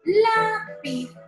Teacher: en la palabra lápiz, la sílaba tónica es la penúltima, que es la.